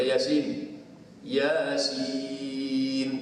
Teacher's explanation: Ya tu 2 aja. Sin tu yang panjang sampai 6 tu. Sebab tu atas ya tu dia tak buat tanda panjang.